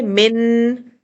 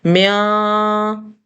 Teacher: من میں زبان اوپر جا رہی ہے، سخت مسوروں پر لگ رہی ہے، لیکن میاں میں زبان نیچے لیٹی ہوئی ہے اور ناک میں نون کے ساؤنڈ کو رکھا گیا ہے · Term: ادھورا غنہ